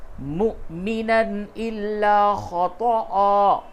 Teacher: أَن يَقْتُلَ مُؤْمِنًا إِلَّا خَطَأً، مُؤْمِنًا، میم کے بعد حمزہ ہے، میم حمزہ پیش مو، یہ واو نہیں پڑھا جائے گا بلکہ حمزہ پڑھا جائے گا، تو اس جگہ پہ جھٹکے کے ساتھ پڑھنا ہے